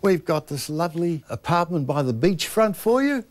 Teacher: That's the Kiwi rising inflection at the end of a sentence